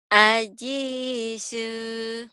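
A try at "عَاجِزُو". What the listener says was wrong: Ajizu. Zunya kerapuhan nih kayaknya. Jinya keras memang. Ajizu. Ajizu.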